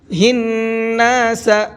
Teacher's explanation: نون کے اوپر تشدید ہے تو یہاں پر غنہ کریں گے، کیونکہ نون کے اوپر تشدید ہوتی ہے تو وہاں پر غنہ کر کے پڑھتے ہیں۔